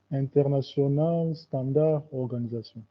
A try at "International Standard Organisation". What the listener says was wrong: l'as prononcé en français, mais c'est un mot anglais plutôt. Donc, c'est International Standardization Organization.